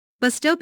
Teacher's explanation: Bus stop is a compound noun, with the main stress on the first word.